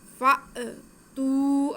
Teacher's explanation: تو یہ حمزہ ساکن ہو گیا، تو حمزہ کو ہم جھٹکا دے کے پڑھیں گے. فأتوا، اگر جھٹکا نہیں دیں گے تو وہ الف بن جائے گا، تو یہ الف تو ہے نہیں، یہ ہے حمزہ، تو ہم نے جھٹکا ضرور لگانا.